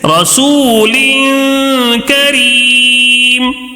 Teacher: غنہ کر کے پڑھیں گے. کتنا غنہ کریں گے؟ ایک الف کے برابر، یعنی تھوڑا سا غنہ کریں گے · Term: تنوین کا اخفا